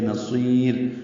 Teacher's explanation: سواد کو ہم وقف کر رہے ہیں را پہ، را باریک ہوگی کیونکہ اس سے پہلے یا ساکن ہے. وقفاً یہ را باریک ہے.